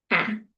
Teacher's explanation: It's in front but it is low. It's a low front bow. · It's a low front vowel, it is lax. So, ah, and it's unrounded.